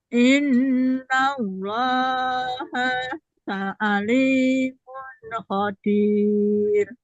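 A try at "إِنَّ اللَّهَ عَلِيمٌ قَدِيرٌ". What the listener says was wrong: Didengungkan dulu tanwin bertemu kopnya. Alimun qadir. Ya, nun itu yang tanwin bertemu kopnya itu kan ikhfa, Bunda. Makanya di situ didengungkan alimun qadir. Sudah lancar, hanya sedikit di itunya, idgham ya.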